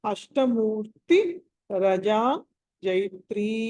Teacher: అక్కడ ష అన్నది షట్కోన్వల ష, మామూలు ట అని అల్ప ప్రాణం